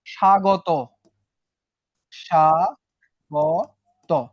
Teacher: স্বাগত উচ্চারণের সময় তুমি কি ব কে পেয়েছিলা? না, ব কে পাও নাই। উচ্চারণটা জাস্ট স ছিল।